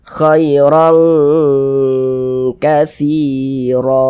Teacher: huruf istiala gitu Jadi kita baca tipis saja k Kir kemudian kita dengungkan jadi suaranya itu kita tahan kita panjangkan sejenak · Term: ikhfa Hakiki